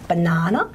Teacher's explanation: Our letter B would tend to be much more, our letter B would tend to be more like the letter P at the beginning of a word like banana. You really wouldn't have much voicing on the letter B for banana.